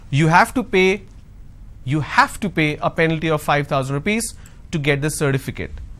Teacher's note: Now here I'm going to stress on have.